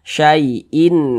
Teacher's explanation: berjumpa dengan huruf ain hukumnya adalah izhar halq karena dia izhar maka cara membacanya itu dibaca jelas tidak berdengung kita baca sinimin nah dibaca jelas innya tuh kemudian tidak berdengung